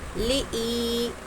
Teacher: یا ساکن سے پہلے زیر ہے یا مدہ ہوگا، ایک الف کی مقدار کھینچیں گے